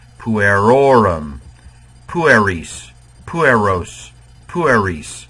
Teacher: the second to last uh vowel is long it gets the stress